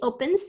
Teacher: i hear pen and then z sound at the end